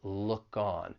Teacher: We can link that final k consonant sound in look with the vowel sound in on. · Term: linking